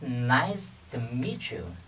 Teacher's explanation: To, bởi vì chữ to trong tiếng Anh thì nó chỉ là phụ, chữ phụ, do đó chúng ta đọc rất là nhẹ. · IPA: /ɪts-nɑɪs-tə-mi-tʃu/